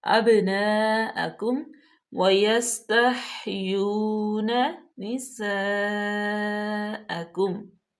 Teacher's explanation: ہا کا مخرج اچھے طریقے سے واضح کریں، سین پہ سیٹی کی آواز پیدا کریں اور تا کو باریک پڑھیں۔